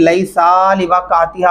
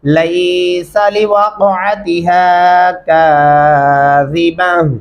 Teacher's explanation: यहाँ पे भी एक गलती हो रही होती है, लैसा लिवक़अतिहा पढ़ जाते हैं, लैसा सीन को खींचेंगे नहीं